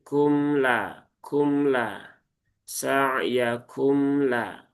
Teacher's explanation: sehingga sifatnya tidak tertunaikan, justru malah berubah. Maka tunaikan tawasudnya dengan ya dialirkan sedikit saja, karena tawasud itu diantara mengalir dan tertahan.